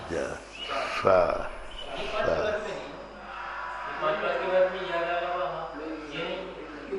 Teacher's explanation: जब सा का उच्चारण करो तो सीटी बजना चाहिए। सा, अपनी जिह्वा थोड़ी सी सीटी के आकार की होना चाहिए। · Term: दंती सा